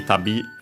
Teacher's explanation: accent on the last syllable